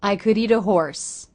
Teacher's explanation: So it's a flap T or a light D